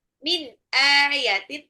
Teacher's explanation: nun sukun ketemu alif itu adalah izhar jelas